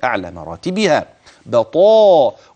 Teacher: وانتبه للطاء، لا تأتي منك تاء، وانتبه للمد الذي بعد ذلك بطاء، والتفخيم، الطاء في أعلى مراتبها بطاء، والألف بعدها تابع للطاء